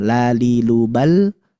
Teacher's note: Lalilubal itu ada bagian tepi lidah tapi bukan bagian dod. Nah, dia bagian depannya. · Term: huruf lam